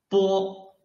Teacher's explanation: your lips are blocking the airflow, and then suddenly open your lips to let the airflow rush out of your mouth